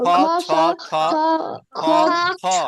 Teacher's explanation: যখন খ ছ বলবে তখন দেখবা যে অনেক বাতাস বেরবে।